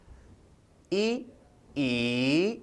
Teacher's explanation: मुख की आकृति चपटी हो जाती, होठों के ओर छोर सिल जाते हैं। मुख का मध्य भाग थोड़ा सा खुला रहता है, मुख लगभग बंद हो जाता है। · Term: समृत स्वर